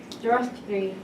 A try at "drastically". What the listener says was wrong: You have this something R problem. Anything like B, G, whatever that gets to R.